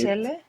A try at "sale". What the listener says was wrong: Again, you're making some Turkish vowel harmony here, huh? sale. So that sele you put before is because it just sounds better. The mind has some kind of desire for this vowel harmony. Sale.